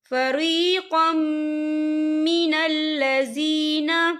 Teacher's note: تنوین کے بعد جو ہے میم آ رہا ہے، اور میم جو ہے حروف یرملون میں سے ہے، تو یہاں پر ادغام ہوگا اور ہم اسے غننے کے ساتھ پڑھیں گے